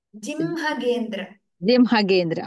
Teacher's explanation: ದ ಅನುನಾಸಿಕ is pronounced first and ಹ is pronounced after that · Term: ಅನುನಾಸಿಕ ಅಂಡ್ ಹಕಾರ